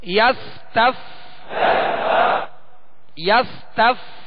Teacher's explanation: فا کا مخرج کیا ہے؟ اوپر کے سامنے والے دو دانت جو ہیں اس کا کنارہ اور نچلے ہونٹ کا تر حصہ